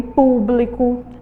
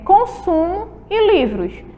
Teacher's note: Eu sublinhei aqui palavrinhas que terminam aí com a letrinha O, com som de U